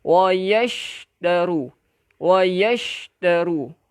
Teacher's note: shin ni sifat tafashi nah, tafashi iaitu semburan